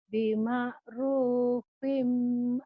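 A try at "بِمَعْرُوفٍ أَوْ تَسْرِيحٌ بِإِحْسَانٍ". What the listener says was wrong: Bima'rufinnya idhar. Bima'rufin. Fin. Bima'rufinnya idhar.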